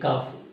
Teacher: کاف کا مخرج ہے زبان کی جڑ اور تالو کے سخت حصے سے ادا ہوتا ہے